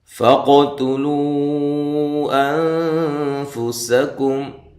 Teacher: فقو قاف کو ہلا کر پڑھنا ہے، تا کو باریک پڑھنا ہے